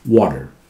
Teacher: Americans pronounce this T after a vowel as half D. It comes, tongue comes very close to make the sound D, then pulls back.